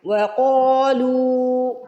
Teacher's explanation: لو میں دیکھیے آپ پیش کے بعد واو ساکن آ رہا ہے، اسے واو مدہ کہتے ہیں، اس کو بھی کھینچ کے ادا کرتے ہیں۔ قاف اور لام دونوں کو کھینچ کے ادا کرنا ہے، آپ نے ان دونوں کو ایکول کھینچنا ہے، سیم کھینچنا ہے۔ وَقَالُوا، ایسا نہیں ہے قاف کو زیادہ کھینچیں گے اور لام کو کم کھینچیں گے، دونوں کو ایک جیسا کھینچنا ہے۔